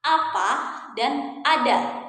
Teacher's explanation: Apa maksudnya? Artinya ya ketika kita mengucapkan bunyi vokal A ini, posisi lidah kita ya dia berada di posisi rendah bawah dan kita menggunakan lidah bagian depan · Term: vokal A rendah bawah depan